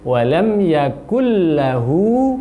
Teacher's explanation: panjangkan hunya 2 harokat